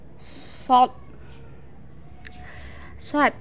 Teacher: Tempat keluarnya sama seperti melafalkan huruf sin, dan sifat serta karakternya pun jauh berbeda dengan huruf sin. Yang membedakan antara sin dan shod adalah suaranya menebal saat kita melafalkan huruf shod. · ketika kita melafalkan huruf shod, maka posisi bagian pangkal terangkat. Sementara bagian depan pun menutup langit-langit sehingga suaranya menebal.